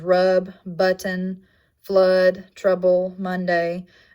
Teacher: It only happens in stressed syllable placement, and its description is low, mid, back, central, unrounded, and lax. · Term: the wedge